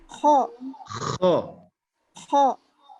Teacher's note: Jadi huruf kho itu memang tebalnya mau kho mau khi mau khu tetap dikeluarkan memang semaksimal mungkin agar semakin jelas hurufnya.